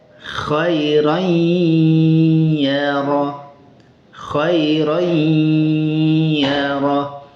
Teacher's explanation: Tanwinnya itu hilang. Tapi sifat ghunah dari nun yang dibaca tanwin itu maka dia tetap ada. makhraj ya-nya terbaca dan sifat ghunah dari tanwinnya juga ikut terbaca kir yarah. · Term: idgham naqis